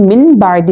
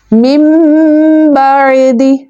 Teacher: اقلاب کہتا ہے وہاں پر نون ساکن کو میم سے بدل کر اخفا کر کے پڑھیں گے · نون ساکن کا ساؤنڈ نہیں لائیں گے، ہم نون کو سائلنٹ کر دیں گے اور ہم امیجن کریں گے با کی وجہ سے کہ نون کے بعد با لیٹر ہے، اس لیے ہم نون ساکن کو سکپ کرتے ہوئے میم کو سپوز کریں گے اور دونوں میم کو ملا کر ایک ساؤنڈ کریٹ ہوگا جو کہ اخفا کا ساؤنڈ ہوگا، میم بعدی۔